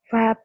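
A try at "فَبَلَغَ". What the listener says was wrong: Fa. Wah, wah. Kedengarannya kayak wah. Fa ya. Karena bibirnya kurang ngebuka. Jadi kayak wa. Padahal fa. Fa.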